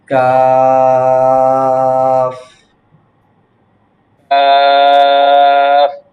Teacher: হুম, আবার বলেন, জিহ্বার বাংলাটা বলেন। গোড়া জিহ্বার গোড়া হইতে একটু আগে বাড়াইয়া তার বরাবর উপরে তালুর সাথে লাগাইয়া উচ্চারিত হয়